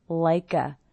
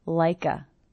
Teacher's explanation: Also, again here we have ending consonant sound, beginning vowel sound, like a. I hear the K linking to the schwa